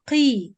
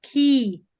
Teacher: So you reduce the tafkhim, but at the same time don't change it into kaf. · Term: qaf kasra